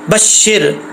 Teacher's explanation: आगे शीन को रा से कनेक्ट करेंगे, शीन ज़ेर राशिर बशिर। रा साकिन से पहले ज़ेर है तो रा बरीक पढ़ा जाएगा, अगर ज़बर होता तो फिर पुर पढ़ा जाता।